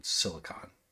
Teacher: Of course, it's an I, but like you pronounce it like you do any schwah. Just the most neutral vowel sound, silicon.